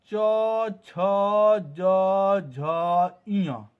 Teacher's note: इन वर्णों का उच्चारण तभी होता है जब हमारा जीव तालु से स्पर्श करता है